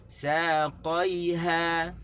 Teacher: Saqaiha, kena tekan di ha.